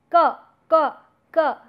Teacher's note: back of the tongue raising or touching the soft palate. In the word like ka, ka, ka, so you see that it is not the hard palate which is involved, and it is neither the teeth nor the alveolar ridge, rather your tongue approaches to soft palate.